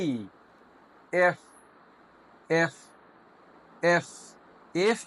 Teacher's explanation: এফ বলার সময় আমাদের উপরের দুটো দাঁত নিচের ঠোঁটের পেটের সাথে লাগবে।